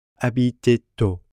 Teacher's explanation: Since au begins with a vowel, we end up with liaison and have to pronounce the T on the end of habiter.